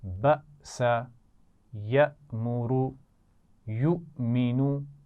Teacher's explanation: تو حمزہ ساکن وہ حمزہ جس پر جزم ہو، اور اس حمزہ کو ہم جھٹکے سے پڑھتے ہیں